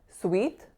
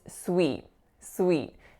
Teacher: the vowel is not a pure flat vowel E